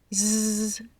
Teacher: de la s Sonora la s Sonora es un sonido vibrante la boca queda en la misma posición que en la s sorda pero se pronuncia con la vibración de la voz parecido al zumbido de una abeja Z es el mismo sonido